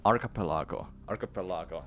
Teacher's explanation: It has a lot to do with the stress of syllables. Pel is stressed and A sounded unstressed.